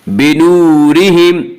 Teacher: بنورہم، واو مدہ، واو مدہ وہ واو جو ساکن ہو اس سے پہلے پیش ہو، اور واو مدہ کو ایک الف کی مقدار کھینچ کر پڑھیں گے